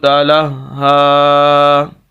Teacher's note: لام کو ہم ہا کے ساتھ ملائیں گے، وجہ اس کی کیا ہے کہ ہا مشدد ہے، یہ شد کی علامت ہے۔